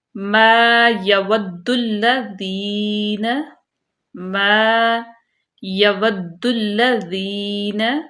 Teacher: الف سے پہلے زبر آ گئی تو اس کو ہم لمبا اس لیے کریں کیونکہ الف مدہ ہے۔ تو الف مدہ کو ہم کھڑی حرکات کے قائم مقام لمبا کرتے ہیں۔